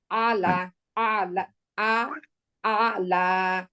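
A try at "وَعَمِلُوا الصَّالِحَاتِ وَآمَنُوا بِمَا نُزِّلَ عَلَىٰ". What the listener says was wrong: আলা একসাথে হবে, কারণ মাঝখানে তো আয়ের মাঝখানে কিছু নাই। আ লামের ভিতরে কিছু আছে? কোনো সুকুন নেওয়া কিছু নাই, কোনো আলিফ দেওয়া টান নাই, কিছু নাই। আপনি বলবেন হচ্ছে আলা, লাতে গিয়ে টান দেবেন আলা।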